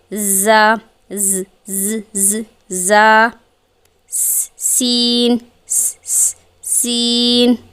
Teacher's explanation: ان کے اندر بس فرق جو ہے وہ تفخیم اور ترقیق کے اعتبار سے ہے، یعنی ان کے اندر جو فرق ہے وہ پر اور باریک کے اعتبار سے ہے۔ زا اور سین مرقق ہیں، یعنی کہ باریک پڑھے جانے والے حروف ہیں · دانتوں میں تھوڑا گیپ ہوگا تاکہ ایئر فلو پاس ہو سکے اور سیٹی جیسی آواز آئے